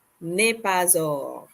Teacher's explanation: we are going to pronounce the s for pa because the word following it begins with a vowel